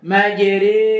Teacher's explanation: Yaitu dengan mencondongkan fathah kepada kasrah. Condongnya bukan merubah condong dan mencondongkan alif kepada ya. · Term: imalah kubra